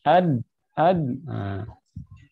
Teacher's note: saya rasa ujung lidah bertemu gigi seri atas. Disitulah ketika saya bilang disitulah titik suara, titik berakhirnya suara.